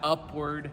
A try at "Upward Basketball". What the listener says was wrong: Not Upwards. There's no S.